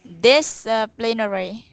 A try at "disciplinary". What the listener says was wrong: When you say disciplinary, you're putting emphasis on the pl part. Don't do that.